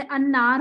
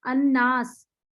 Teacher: पढ़ा नहीं जाता लाम, लेकिन लिखा हुआ होता है